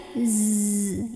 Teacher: Ya, ada bunyi berisiknya. Keluar dari ujung lidah ditempel ke di antara gigi bawah. Ada sifat namanya sofir di zai ini, ya.